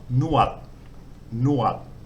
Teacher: So this word here, nonu, the N sound is the initial consonant, then the wan, which acts as a vowel, and then the dodek, which as a final consonant makes an unreleased T sound